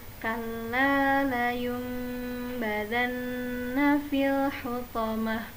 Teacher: Jadi ketika bertemu dengan mim kecil di atas huruf nun dan ba, nun sukun dan ba, maka cara membacanya dengan mengganti nun menjadi mim dan mimnya ditahan selama 3 harokat